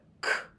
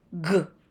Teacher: Both of these sounds are made in the back of the throat. The tongue scrapes the roof of the mouth. K is unvoiced and can be represented with the letters C, the letters K, the letters CK together, and sometimes the CH for words of Greek origin, like cat, kite, pick, or Christopher. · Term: tongue scrapers